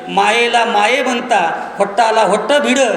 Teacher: माय हा शब्द ओठाला ओट भिडवल्याशिवाय म्हणता येत नाही